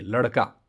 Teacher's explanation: इसके उच्चारण में जीभ की नोक जो है मूर्धा को झटके से स्पर्श करती है। ठीक है? और जीहभा उलट कर मूर्धा को झटके से छूती है।